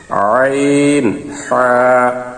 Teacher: দুই নম্বর মাখরাজ হলকের মধ্যখান হইতে